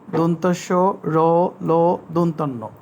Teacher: জিভের আগা দাঁতের গোড়াতে লাগে বলে এগুলো দন্তমূলীয় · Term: দন্তমূলীয় ধ্বনি